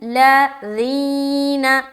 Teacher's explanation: ذی میں آواز نیچے کی طرف جا رہی ہے، ذال کو باریک ادا کریں گے نرمی کے ساتھ